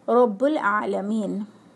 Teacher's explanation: But in huruf qamari, if al comes before huruf qamari moon letters, then while reading in a flow, the alif of al will be dropped and only lam will be pronounced with the previous letter